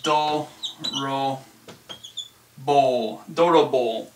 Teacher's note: we would add an ooh sound to make this elongated o sound